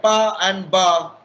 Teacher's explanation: So when we talk of pa and ba, so what is happening? Pa is voiceless and ba is voiced.